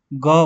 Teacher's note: ग बोलो तो आपका थोड़ा सा वाइब्रेशन हो रहा है कंपन हो रहा है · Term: घोष